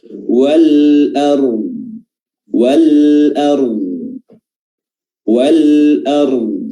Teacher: Alif lam al-qamariyah di mana lamnya dibaca izhar, dibaca jelas, ya. Lamnya dibaca jelas dan hamzahnya juga dibaca jelas tanpa tasydid